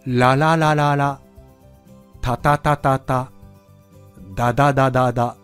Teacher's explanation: 舌が上あごについて離れて、ついて離れてを繰り返してますよね。